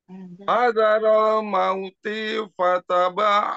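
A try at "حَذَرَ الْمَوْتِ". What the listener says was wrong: T-nya kepanjangan. Mauti. Nah, kepanjangan. Langsung. Mauti fata.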